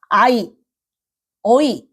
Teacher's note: 중세시대 때는 아이 어이 이렇게 이중모음으로 읽었을 것이다 이렇게 추측을 합니다 자 그래서요 애가 중세시대 땐 이중모음이 있다라는 거